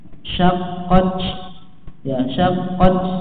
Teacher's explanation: Ta sukun ini memiliki sifat hamz, ya. Maka perhatikan hamznya, dan kadar hamznya nggak boleh berlebihan. Kalau berlebihan bisa menghasilkan suara c, ya.